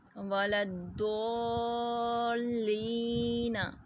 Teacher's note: ضاد کو ضاد ہی پڑھنا ہے، دال کا مخارج اور ہے، ضاد کا مخارج اور ہے، اس کو زبان کی کروٹ سے ادا کرنا ہے